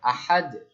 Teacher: আহাদুন, আহাদুন, আহাদুন থামলে কি হয়ে যাবে, সাকিন। তাহলে সাকিনটা কিসের উপরে হচ্ছে, দালের উপরে, তাহলে কি হয়ে যাবে, কলকলা